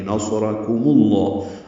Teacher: وَلَقَدْ نَصَرَكُم میں صاد را دونوں پر ہیں، کاف باریک ہے. میم کی پیش کو لام اسم جلالہ سے ملا دیں گے. نَصَرَكُمُ اللَّهُ، اصل میں نَصَرَكُم تھا، ملانے کی وجہ سے پیش لگائی گئی ہے.